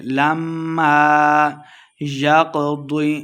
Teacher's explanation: قاف اور ضاد دونوں کو موٹا پڑھیں گے